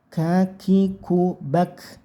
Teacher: Kafnya disukun, dikasih angin sedikit